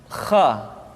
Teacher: Kha dikeluarkan dari pangkal tenggorokan. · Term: huruf kha